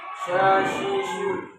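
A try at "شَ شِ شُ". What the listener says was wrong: Masih kedengeran tebal sih Pak sebenarnya. Iya, bukan sya, shi, shu gitu. Jadi kalau huruf istif.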